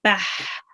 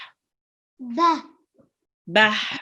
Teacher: make sure to read the ha from your throat